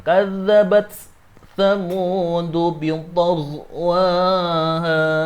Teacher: Maka dia taknya, hamznya harus kelihatan karena dia dibaca idhar.